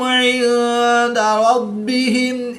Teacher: نون ساکن کے بعد دال حروف اخفا میں سے ہے تو یہاں پر اخفا ہوگا، یعنی غنہ زمانی کر کے پڑھیں گے